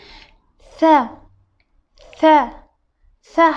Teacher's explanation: tilimizni uchini ingichkaroq qilib ozgina tashqariroqqa chiqarib talaffuz qilamiz